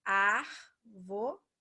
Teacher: 3 sílabas. Só que o mais forte é o A, então ela é proparoxítona.